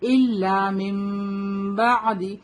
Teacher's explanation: جب نون ساکن کے بعد با آتا ہے تو ہم نون کو میم سے بدل کر پڑھتے ہیں